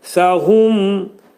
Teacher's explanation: Mim izhar edirik. Ağız yumulur. Dodaq hərfidir.